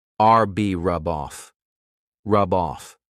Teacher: They go together. I can take that B sound and connect it to the next word, but I have to combine them together.